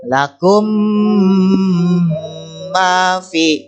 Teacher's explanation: Nah, mimnya, suara mim ini dibaca dengung ya, atau suara mimnya bertasydid jadi 2 atau double ya. Dibaca dengungnya masuk ke hidung. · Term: idgham mimi